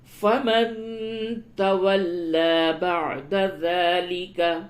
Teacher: فَمَن تَوَلَّى بَعْدَ ذَلِكَ، نون ساکن کے بعد تا ہے، اس جگہ پہ اخفا کیجئے